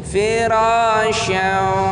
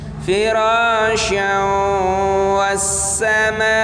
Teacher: Tapi kalau kita satukan atau kita langsungkan, kita sambung menjadi firasya. Tanwin bertemu dengan waw itu harus gunnah, idgham bi gunnah. firasyan was-samaa, panjangnya 6 harokat.